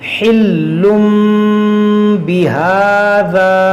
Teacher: یعنی کہ ہم تنوین کو میم سے بدل کر اخفا کریں گے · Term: اقلاب